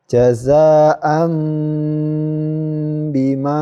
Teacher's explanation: Ya, fathah tanwin ini bertemu dengan ba. Tanwinnya ini ya berubah menjadi suara mim. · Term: iklab